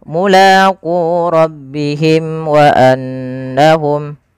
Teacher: Syafawi berarti dia berkenaan dengan berkenaan dengan bibir kita. Maka karena makhraj daripada huruf mim di bibir, maka suara mimnya di sini harus dijelaskan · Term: izhar syafawi